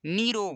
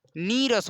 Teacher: विसर्ग के बाद अगर रा आता है तो विसर्ग का लोप हो जाता है और दीर्घ मात्रा हो जाती है। दीर्घ मात्रा हो जाती है मतलब यहाँ पर देखिए निधन रोग, निधन रोग है ना, तो पहला तो विसर्ग हटेगा और मात्रा दीर्घ होगी, दो ही काम करना है, पहला विसर्ग हटाना है, दूसरा मात्रा को दीर्घ करना है।